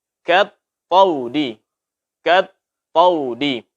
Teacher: Tetap suaranya ditipiskan sekalipun berdampingan dengan huruf tebal, sekalipun berdampingan dengan alif. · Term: huruf kaf